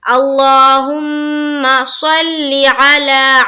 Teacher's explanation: اللہم میں میم مشدد کا غنہ کرنا ہے، خیال رکھنا ہے کہ میم میں مشدد کا غنہ کریں گے، صاد کو منہ بھر کر نکالیں گے، موٹا کر کے نکالیں گے۔